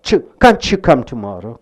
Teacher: T and Y joins together to give you a sound called ch. Can't you? T plus Y.